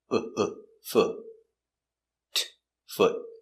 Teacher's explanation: It's a stop T, so we don't say foot. We put our tongue up and stop.